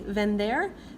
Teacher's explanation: Ve, like vender, but this is almost a combination of a B and V sound, so it's not as harsh as we do in English with the V. It's more of a soft, like B.